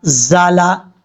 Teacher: زا کو پڑھتے ہوئے سیٹی کے ساتھ پڑھا جائے گا کیونکہ یہ حروف صفیریہ میں سے ہے